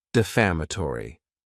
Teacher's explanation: And this word has five syllables and the stress is on that second syllable.